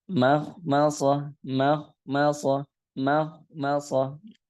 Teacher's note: Ma tipis, kha tebal, mim tipis lagi, so tebal lagi